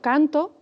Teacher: En el canto, la sílaba tónica es can. La vocal tónica, la en el canto, la sílaba tónica de cantó es to y la vocal tónica es la o.